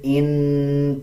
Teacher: اب اس کو حمزہ نون زیر ان پڑھا جائے گا، غنہ کریں گے، غننے کی آواز کو ناک سے نکالا جائے گا۔